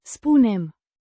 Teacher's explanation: With a distinct U. sound like in, moon, and a softer, n, sound at the end.